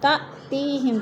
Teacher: تأتیہم تا میں حمزہ ساکنہ کو جھٹکا دے کر پڑھیں گے۔ تی میں یا مدہ۔